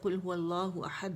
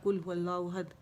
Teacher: قاف جو 2 نقطے والی ہے اس کی بجائے ہم نے باریک کیف والا پڑھ لیا